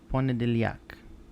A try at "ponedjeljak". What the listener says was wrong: We're getting there. I mean, I'll take that.